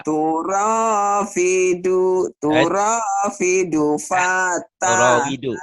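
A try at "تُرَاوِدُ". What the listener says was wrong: Turawidu ada w dulu.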